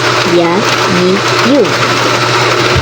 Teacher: Ya is pronounced from the middle part of the tongue and the roof of the mouth. When we use the fatha, kasra, and dhamma, we basically read it as ya, yi, you.